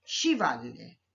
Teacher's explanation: तो अ और आ मिलकर दीर्घ आ हो गया। तो शिव जमा आल्य बन गया शिवालय।